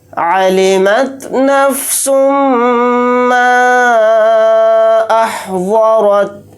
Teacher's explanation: میم کے اوپر تشدید ہے تو اس کے اندر غنہ کر کے پڑھیں گے